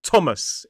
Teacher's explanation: with a schwa /ə/ in the second syllable. · Two syllables, stress on the first. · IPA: /ˈtɒməs/